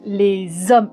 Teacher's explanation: Le H est là, mais c'est comme si il n'existait pas. On fait donc la liaison. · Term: H mué